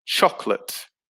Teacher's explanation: it only has two syllables so the middle o disappears